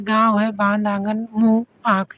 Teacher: जहां अनुनासिक हो समझ लीजिए। मुख और नासिका दोनों से हवा निकलेगी